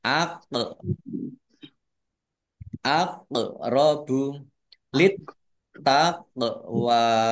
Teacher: qof sukun bacaan qalqalah dibaca memantul